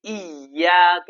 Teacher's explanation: میں بعض لوگ کیا کرتے ہیں ایاک نہیں ہے بلکہ ایاک، یہاں پہ زور دے کے پڑھنا ہے، ایاک تشدید، اس طریقے سے پڑھنا، لیٹر پہ آتا ہے وہ لیٹر کو دوبارہ پڑھا جاتا ہے